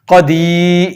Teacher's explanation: قاف حروف مستعلیہ میں سے اس کو موٹا کر کے پڑھتے ہیں۔